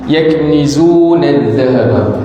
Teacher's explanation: huruf antara 2 gigi. Pastikan hujung lidah antara dua gigi. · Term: Dzal